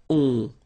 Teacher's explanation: you don't pronounce the final s, you get the on sound. Okay? Nasal in your nose, on. All right? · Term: nasal on